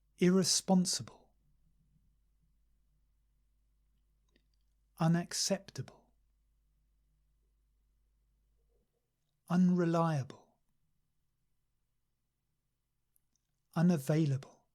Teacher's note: So we have a little stress on the first syllable and the main stress on the third syllable.